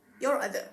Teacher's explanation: linking r when an r is present in between two vowel sounds · in the word your other, the R exists between U and O, your other.